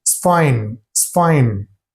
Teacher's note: they reduce the sound of the word that in that sentence and they just speak it's fine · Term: reduced